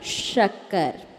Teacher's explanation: तालव्य सा जिसमें आपकी जीभ ऊपर तालू को टच करे